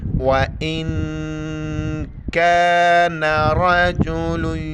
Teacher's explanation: نون ساکن ہے، یہاں پر ناک میں آواز چھپائیں گے ، وَإِن كَانَ رَجُلٌ يُورَثُ، را زبر را کے اوپر زبر